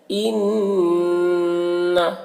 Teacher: نون مشدد ہے تو یہاں پر غنہ کریں گے